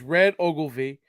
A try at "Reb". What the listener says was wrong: Reb. Reb. Reb, not red. Reb. Like it's bad.